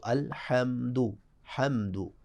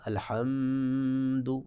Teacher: تو یہاں میم پہ غنہ نہیں ہوگا